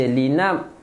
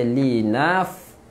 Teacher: Li nafsi salah kan, fa tak rapatkan bibir. Fa bibir bawah naik ke atas je. Li naf, keluarkan angin. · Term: fa ada angin